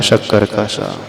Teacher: जीभ जो है तालू में टच होती है, वो अपर जाव में टच होती है। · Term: तालव्य श